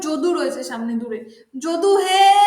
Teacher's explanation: ঠিক তেমন ভাবে ধরো যদু রয়েছে সামনে দূরে, যদু হে, অর্থাৎ হেটাকে দেখো টেনে টেনে টেনে টেনে আমরা ডাকছি, এটাকে বলা হচ্ছে প্লুত স্বর